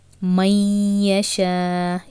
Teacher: You are completely leaving noon since ya shadda is bighunna. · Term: idgham bighunna